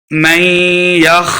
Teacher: میم کو یا کے سامنے لائیں گے، یا حرف جر ملون سے، یا مشدد ہے تو غنہ کریں گے. من یخ، خا کو موٹا پڑھیں گے